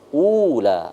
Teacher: Ula ada waw mati atau waw sukun, itu ciri daripada mad tabi'i. Itu mad asli, maka dibaca satu alif atau dua harokat atau dua ketukan ya. Sama halnya dengan la dari kata ula, itu mad tabi'i juga ya.